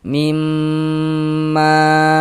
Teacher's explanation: sebelum alif sebelah sininya nih ada ini nih ada harakat fathah tanda baca fathah nih baris miring nih maka huruf yang memiliki harakat fathahnya dibaca panjang di sini kan yang memiliki harakat fathah huruf mim maka huruf mim yang dibaca panjang mad thabi'i panjang dua harakat